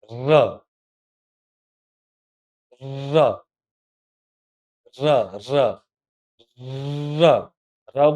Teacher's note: અને બે દાંત ભેગા કરીને ર ને છે ને જોરથી તમારી જીભ છે ને દાંતે પછાડી પડશે. ર ર ર ર ર ર બોલતી વખતે છે ને દાંતમાં વાઇબ્રેશન થશે. જો ર થયું. એટલા માટે એને વાઇબ્રેશનને કંપન પણ કહેવાય ને પ્રકંપન કહેવાય.